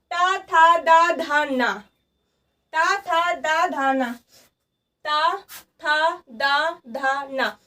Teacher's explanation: जब हम इस था दा धा ना वाली लाइन को पढ़ते हैं तो कहीं ना कहीं जो हमारे दांत होते हैं ये हमारी जीभ को स्पर्श करते हैं